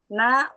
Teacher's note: Ujung lidah bertemu dengan ee gusi atas